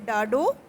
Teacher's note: زبان کے سرے کو مسوڑوں سے لگا کر ایک دم اندر کی طرف کھینچنے سے نکلتی ہے